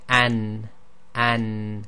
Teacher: tongue is being used quite close towards the gums okay so the front of the tongue presses against the area just before the gum